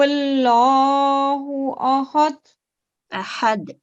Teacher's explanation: جی اب آپ اس کو دوبارہ پڑھیں اور کاف کو ٹھیک کرتے ہوئے اور لام کو بھی ٹھیک کرتے ہوئے, اور کوشش کریں کہ ہا کی آواز گلے سے آئے اور دال پہ اوپر درمیانہ کلکلا ہو